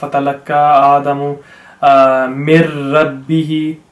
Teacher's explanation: Now, مِنْ رَبِّهِ, we have idgham tam, we have to not pronounce the noon at all, but we have to remember that the tashdid has a lot of power in it, which means that because we're reading every letter basically twice, over here we have to spend a bit of time.